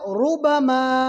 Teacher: را کے اوپر پیش ہے، را کو پور پڑھیں گے، موٹا پڑھیں گے۔